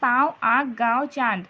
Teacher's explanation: जब हम अनुनासिक शब्द का उच्चारण करते हैं तो हमारे मुंह के साथ-साथ नाक को भी छूकर ध्वनि निकलती है · ध्वनि मुख के साथ-साथ नासिका द्वार को छूकर निकलती है अर्थात अनुनासिक की ध्वनि नाक और मुंह दोनों में साथ-साथ निकलती है